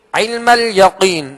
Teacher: यहाँ कौफ को पुर पढ़ेंगे, हुर्फ मुस्तालिया में से है